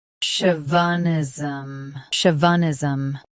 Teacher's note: Both US and UK have the same pronunciation of this word. Stress show. Keep v soft and finish with nism smoothly.